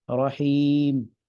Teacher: یہ یا ساکن سے پہلے زیر ہے، یہ مدہ یا ہو جائے گی، اور اس کا مخرج جوف دہن ہے